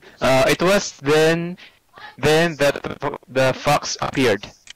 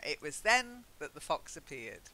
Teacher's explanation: You need to just stress then to say, at that moment. Try it. It was then that the fox appeared.